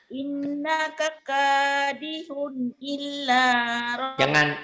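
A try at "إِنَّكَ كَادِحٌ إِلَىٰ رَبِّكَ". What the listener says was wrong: Jangan ilah nggak ada tasdid ilah. Iya, jangan.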